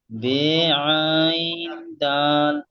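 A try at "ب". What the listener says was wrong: জি ভাই, বে পড়বে না, বা, বা, আইন দাল।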